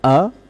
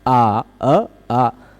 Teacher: बोलने में उच्चारण स्थान नहीं बदलता पर प्रयत्न बदल जाता है, प्रयत्न बदल जाता है ना। अ संवृत है, आ विवृत हो गया